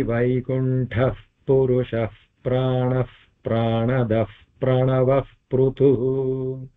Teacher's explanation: all the visargas in these are followed by a pa so everything will be a fa sound